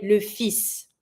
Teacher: you're going to avoid the L, but you're going to be pronouncing the S.